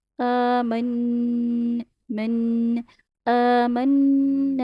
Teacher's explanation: نون کو ٹائم دینا ہے، آواز ناک میں لے کے جانی ہے، جیسے ہنی بی ساؤنڈ نکالتی ایسے نوز میں وائبریشن ہوتی ہے